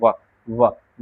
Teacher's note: दंत ओष्ठय। यानी दांत और ओष्ठ के मेल से क्या होता है? व।